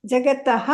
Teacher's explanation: ಕೊನೆತ ವಿಸರ್ಗ ಬಂದಿದ್ರೆ ತಹ ಅಂತನೆ ಪೂರ್ತಿ ಹೇಳಬೇಕು